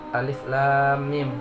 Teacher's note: alifnya itu dibaca pendek, tidak boleh 2 harokat ataupun 6 harokat